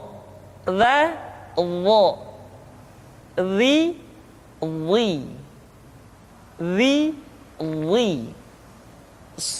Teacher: Diucapkan dengan menyentuhkan ujung lidah dengan dua gigi seri bagian atas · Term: huruf dha